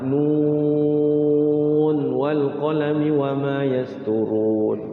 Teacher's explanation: Ya nunnya kan panjang 6 harokat.